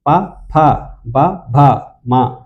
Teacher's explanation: ఈ రెండు పెదాల సహాయంతో పలుకుతాయి రెండు పెదాల సహాయంతో తో పలికేవి ఓష్ట్యాలు ఓష్టములు పెదవుల సహాయంతో పలికేవి ఓష్ట్యాలు · ఓష్ట్యము అంటే మనకు అందరికి తెలిసినవే పెదాలు. పెదవుల సహాయంతో పలుకుతాము కాబట్టి వీటిని ఓష్ట్యాలు అంటారు